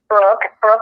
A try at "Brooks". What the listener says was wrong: It's Brooks. Yeah, KS. It's not Brooke.